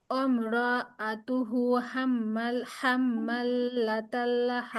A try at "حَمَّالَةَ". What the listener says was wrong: হাম্মাল হবে কেন আপু হাম্মা